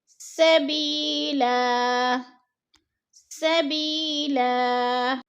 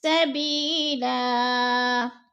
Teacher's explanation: اور سبیلن، دو زبر تنوین ہے، وقف کی صورت میں ہم نے دو زبر نہیں پڑھنے بلکہ دو زبر کو ایک زبر میں بدل کر پڑھنا ہے۔